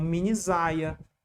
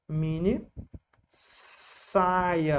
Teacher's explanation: ficar assim não era a leitura disso seria como minisaia porque o s no meio de duas vogais tem som de z